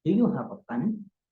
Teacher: So the last word, pen, I raise my voice. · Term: rising tone